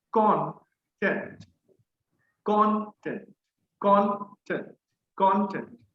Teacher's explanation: So stress should be on the first syllable.